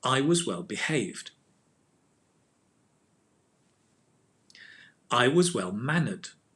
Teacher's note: you put the stress on the haved